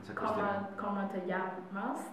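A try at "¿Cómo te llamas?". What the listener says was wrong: Yeah, just the como, it would be more Open. Como. It's the same vowel, como.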